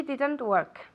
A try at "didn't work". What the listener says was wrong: the T at the end, she didn't.